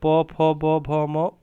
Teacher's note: प फ ब भ म ओष्ठ से बोला जाएगा